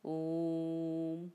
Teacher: ओम के ओकार का उच्चारण सर्वत्र प्लुत ही होता है। आप ओम बोल के देखिए, ओम, तो आपको कितना समय लग रहा है, तिगुना लग रहा है।